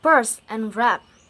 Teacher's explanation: Oral passage is blocked by closing the lips, so this is bilabial. · P is voiceless because when we say this consonant, there is no vibration.